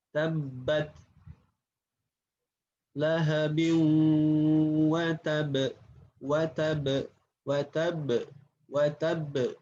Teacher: Kalau huruf ba, dia menempelkan dua bibir disertai dengan tekanan, kemudian tanpa gunnah. Kalau huruf ba ini pengucapannya ditutup dua bibir, dirapatkan, kemudian disertai tekanan ba.